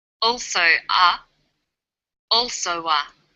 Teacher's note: This is linking type 2. Vowel plus w plus vowel.